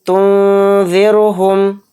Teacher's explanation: اور یہاں پر نون ساکن آ گیا، نون ساکن کے بعد زال آ رہا ہے، اور زال حروف اخفا کے 15 حروف میں سے ایک حرف ہے، تو اس نون کی آواز کو ناک میں چھپا کر ہم اخفا کریں گے۔